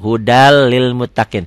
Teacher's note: Hudan lil muttaqin dibacanya jadi hudal lil muttaqin. N-nya jadi hilang tuh, hudal lil muttaqin. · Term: idgham bila gunnah